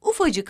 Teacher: ufak sözcüğü cık ekini alınca K ünsüzü düşmüş ve ufacık haline gelmiştir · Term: ses düşmelerini